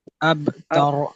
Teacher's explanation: اب با پہ قلقلہ اور را کو موٹا پڑھے